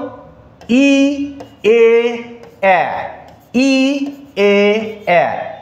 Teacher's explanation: ই এ এবং এ, এই তিনটি বর্ণ উচ্চারণ করার সময় জিভটা সামনের দিকে থাকে, এই জন্য ই এ এ, এটাকে আমরা বলি সম্মুখ স্বরধ্বনি।